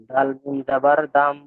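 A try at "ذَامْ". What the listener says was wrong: দাম দাম নয়, দাম দাম দাম নয়, জিভের আগা উপরে দাঁতের আগা, রাল, সা, রাল,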